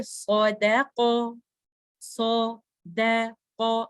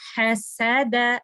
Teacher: چونکہ صاد ہیوی ہے تو بیک آف دا ٹنگ اپ ہو جاتی ہے